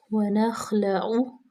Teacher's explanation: خا جو ہے وہ حروف مستعلیہ میں سے ہے، اس پہ ہم جو ہے وہ اس کو موٹا پڑھیں گے، لام باریک، عین کا مخرج واضح کریں گے۔